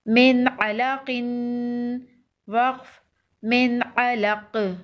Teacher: وقف کی صورت میں قاف پر قلقلہ ہوگا، قاف حروف قلقلہ میں سے ہے۔